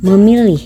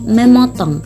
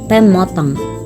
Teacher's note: fonem P pada awal kata bila diberi prefik Me atau prefiks P akan luluh atau disenyawakan dengan bunyi nasal yang homorgan atau sealat ucap misalnya prefiks Me ditambah pilih menjadi memilih prefiks MP ditambah pilih